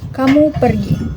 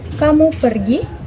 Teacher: Jika diucapkan dengan intonasi datar, maka akan menjadi kalimat berita. Sedangkan kamu pergi dengan intonasi naik menjadi kalimat tanya.